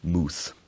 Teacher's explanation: it preserves the monophthongal vowel in words like mouth from Middle English and Old English